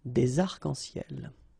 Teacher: we've got this liaison between the two, des arc-en-ciel · we don't really pronounce this final S, so phonetically it's almost the same, but then we've got this liaison between the two